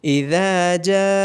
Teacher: جیم کے بعد الف مدہ ہے اور اس کے اوپر مد بھی ہے تو جیم کو 3 سے 5 سیکنڈ کے لیے لمبا کیا جائے گا